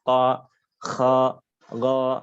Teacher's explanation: pangkal lidahnya terangkat ya ke langit-langit mulut sehingga mengakibatkan suaranya menjadi tebal